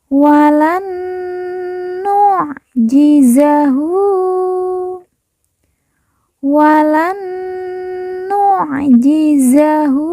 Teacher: nun mati bertemu dengan Nun yang bertasdid kita baca kita tekan kita tahan didengungkan dua harakat Wan nujizahu Wan nujizahu kemudian Hu kita baca panjang dua harakat